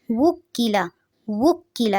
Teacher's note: جو قاف ہے اس کو موٹا نہیں پڑھنا اور لام کی زبر کو بھی لمبا نہیں کرنا